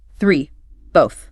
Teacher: But this time, you push the air out without engaging your vocal cords at all. It is purely a breath of air passing over the tongue.